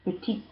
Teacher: we add an E to make it a feminine, but we don't actually pronounce the E. We're pronouncing the final consonant, the T.